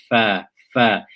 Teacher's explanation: It exits from the inside of the lower lip and the edges of the upper incisors.